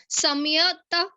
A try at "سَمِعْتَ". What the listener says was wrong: نہیں نہیں رک جاؤ, سمعتا نہیں ہے, میم این کو اکٹھا بولیں, سمعتا.